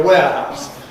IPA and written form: ˈweəhaʊs (warehouse)